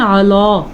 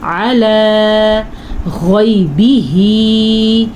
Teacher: लाम हर सूरत में बारीक पढ़ी जाती है